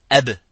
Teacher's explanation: C'est la qalqala qui confère ce retentissement